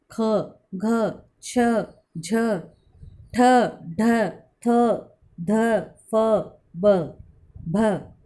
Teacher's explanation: जिन ध्वनियों के उच्चारण में श्वास वायु की मात्रा अधिक होती है उनको महाप्राण व्यंजन कहते हैं